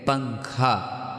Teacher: نون کی آواز کو ناک میں چھپا کر پڑھنا چاہیے، یعنی کہ اب نون کی آواز نہیں دکھانا ہے، یہ 15 حرف آنے سے نون کی آواز کو چھپا دینا ہے، ٹھیک ہے۔ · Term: اخفا